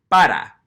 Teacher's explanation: make a little adjustment to our P, where you're not giving it that little puff of air, that little aspiration